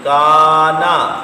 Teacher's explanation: کانا، یہ کاف باریک ہے اور نقطوں والا کاف پر ہے، تو جو کاف باریک ہے اس کے آگے الف آئے تو اس کو بھی باریک کر دیں۔